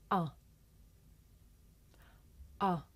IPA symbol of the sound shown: ʌ